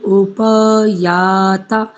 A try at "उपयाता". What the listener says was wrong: जब आप याता करते हैं तो याता का उच्चारण दीर्घ होगा, याता। दूसरा, आप जो अंतराल दे रहे हैं ना शब्दों के उच्चारण, वो थोड़ा सा अधिक हो रहा है, एक तो उसको कम कीजिए।